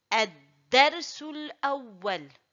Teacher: Il faut dire Ad-Darsu et non pas Darso. Le del, il est aminci. Je dis Ad-Darsul Awwal.